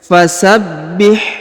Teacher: huruf ba Ini berharakat tasdid maka ditahan dan ditekan